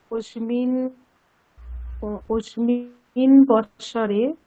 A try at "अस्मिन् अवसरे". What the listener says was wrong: अस्मिन् अवसरे একসঙ্গে হয়ে গেল।